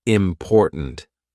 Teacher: My tongue is there. It's ready to do the T, but it doesn't release. We just go important.